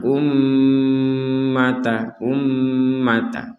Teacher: ada mim bertasdid kita baca dengan dengungan